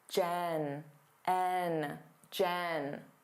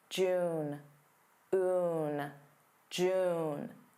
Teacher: Notice how my mouth opens wider when I say Jen, N, Jen. And it stays in a more closed position when I say June